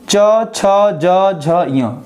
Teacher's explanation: च, छ, ज, झ, य जब आप बोल रहे हैं तो आपकी जीभ जाके उस तालु में चिपक जा रही है। तो उस परिस्थिति में हम कह सकते हैं कि च, छ, ज, झ, य ये तालु से बोले जाते हैं। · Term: तालव्य व्यंजन